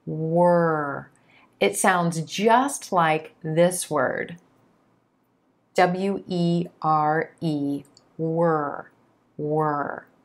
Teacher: the back of the tongue is raised up towards the soft palate · vowel and the consonant as you begin to pronounce this word the lips round out away from the teeth for the W sound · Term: ER sound